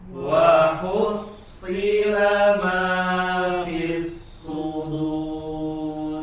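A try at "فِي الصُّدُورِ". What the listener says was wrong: Nah, masih kedengaran tebal ya. Coba fis sudur. Harus hati-hati ya, harus hati-hati ketika ada huruf-huruf yang tipis dan tebal berdampingan.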